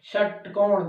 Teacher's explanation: षटकोण, जीभ हमारी क्या हो रही है, मुड़ रही है, इसलिए इसका क्या होगा, मूर्धा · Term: मूर्धन्य सौ